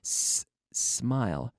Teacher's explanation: the S begins in my mouth not in my vocal cords there's no vibration of my vocal cords